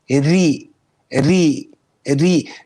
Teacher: the asl of the letter ra, okay, the asl is of istifal, of the empty sound.